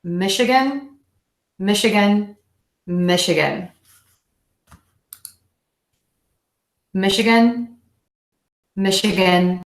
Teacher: again we have this CH but we're actually going to pronounce it like an SH in this case mich up that short schwa syllable and gun Michigan Michigan Michigan